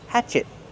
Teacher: Use a stop T. Stop the air. Hatchet. Not hatchet, but hatchet.